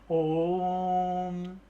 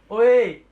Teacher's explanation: उदाहरण के लिए आपका, जैसे आप बोलते हैं ओम, तो इसके अंदर आपने जो ओ को खींचा है वर्ड को लंबा करके, और फिर बाद में कहते हैं माँ की ध्वनि जो आपने उसमें जोड़ी है, तो यही चीज आपकी कहलाती है क्या, पलुत स्वर। इसके अंदर आपको दीर्घ स्वर के कंपैरिजन आपको 3 मात्राओं का समय लगता है, यानी कि 3 टाइम्स मोर देन आपको इसमें बोलने में एफर्ट लगाना होता है, और इसको बोलने में, प्रोनाउंसिएशन में आपको समय देना होता है।